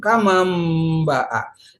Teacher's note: hukumnya iklab dibalik dari suara nun ke suara mim